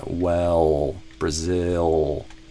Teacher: the lips stay relaxed, and then the tongue pulls kind of back towards the throat. Not the tip of the tongue, but kind of the tongue stretches backward, retracts towards the throat, and you get this kind of ol sound.